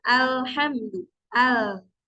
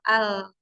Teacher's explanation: sebelah sini nah ke samping-samping sini nah itu yang dinamakan inhirf jadi suaranya berbelok ya yang harusnya ke tengah keluarnya tapi jadi ke samping · keluarnya tapi jadi ke samping ketika kita mengucapkan misalnya alhamdu Al si ujung lidah dan ujung Sisi lidahnya ini kan menempel AL nah Nah maka suaranya itu akan keluar dari celah-celah yang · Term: huruf lam